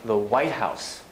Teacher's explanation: White House is a compound noun. Main stress on the white in the White House. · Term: compound stress